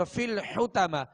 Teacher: حا کو وسط حلق سے ادا کریں گے اور طا کو پر پڑھیں گے. اور آخر میں جو تا ہے یہ گول تا ہے.